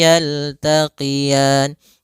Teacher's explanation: ada bacaan lin yaitu adanya fathah bertemu dengan ya sukun. lembut dalam lafalannya.